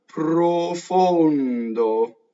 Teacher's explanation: It's closed O's and a nasalized N into the D.